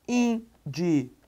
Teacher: Observe que é a penúltima sílaba mais forte é uma paroxítona terminada em ditongo por isso a questão do acento de área separe de área